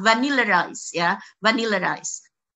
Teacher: Jadi vowel ketemu vowel, ini biasanya lalu ada intrusive R, ada bunyi R yang intrude. Jadi seolah-olah ada R-nya di tengah, vanilla rice ya, vanilla rice.